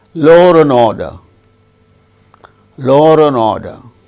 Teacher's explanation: When a word ends with a vowel sound and next word begins also with a vowel sound. In such cases, R intrudes in connected speech.